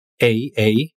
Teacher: You're starting out a bit higher than e. It's not e, but rather a. And your tongue is going to finish in the position of I